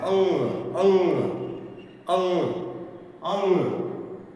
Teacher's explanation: उसको नासिका की ओर नाक की ओर मोड़ दिया जाता है और इसका उच्चारण पूर्ण रूप से नाक से जो है होता है। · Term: अनुस्वार